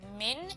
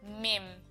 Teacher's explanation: we need to change the noon sakin sound into a meme, so instead of min it will be mim, so we can tick that off because we remembered to do that. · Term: iqlab